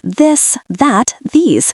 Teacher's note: press your tongue a little harder for the voiced th like this, that, these, letting your throat hum because a small vibration turns a whisper into a statement.